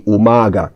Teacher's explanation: in the word umaga, the stress is on the first A